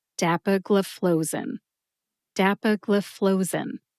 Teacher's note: Put all 5 syllables together and you get dapagliflozin. Emphasize DAP and FLOE. FLOE gets the most emphasis.